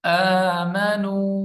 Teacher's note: یہاں پہ مد ہے، 3 الف کی مقدار لمبا کریں گے. آمنو، حمزہ کے اوپر کھڑی زبر ہے.